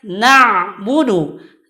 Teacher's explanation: huruf ain ini bersifat tawassut, artinya antara mengalir dan tertahan suara.